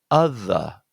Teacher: Stresses on the first syllable, so that again, this here is a short U.